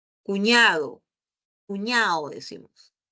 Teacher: en la costa solemos omitir la D.